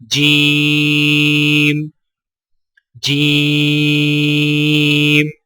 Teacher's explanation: سا، سا کی ادائیگی میں زبان کی نوک کو سامنے والے اوپر کے 2 دانتوں کے اندرونی کناروں سے نرمی سے لگا کر باریک آواز میں پڑھیں، یعنی سا سا۔ جیم، جیم کی ادائیگی میں زبان کے درمیان کو تالو کے ساتھ سختی سے لگا کر باریک آواز میں پڑھیں